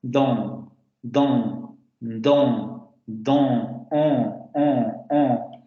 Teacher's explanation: La vocal es la que adquiere la nasalización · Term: vocal nasal